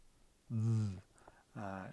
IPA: ð